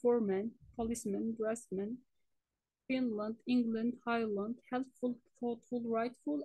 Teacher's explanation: the vowel in the second half of compound noun is reduced